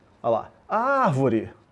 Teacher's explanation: Olha lá, separei, árvore, onde se prolongou aquele ar, proparoxítona.